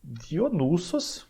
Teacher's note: Ele é um O breve, um O fechado, breve.